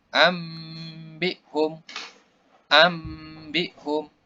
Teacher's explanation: Disertai dengan dengung tiga harakat. Jadi yang berubah menjadi huruf ba ini.